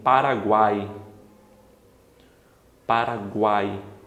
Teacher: Esse guai aqui vai ser o nosso tritongo, porque o U semivogal, A vogal e o I semivogal.